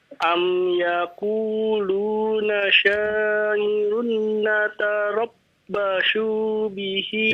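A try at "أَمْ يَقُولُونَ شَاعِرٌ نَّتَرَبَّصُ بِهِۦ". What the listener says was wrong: Jangan dipanjangin. Natarabbasu bihi.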